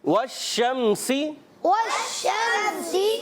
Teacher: واو کی ادائیگی ہونٹوں کی گولائی سے ادا ہوتا ہے. ہونٹ گول کریں گے تو واو ادا ہوگا. · سین کی ادائیگی جو ہوتی ہے سیٹی کے ساتھ. سین سیٹی والا اور شین میں آواز منہ میں پھیل جاتی ہے